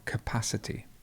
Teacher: the stress goes right in the middle, capacity.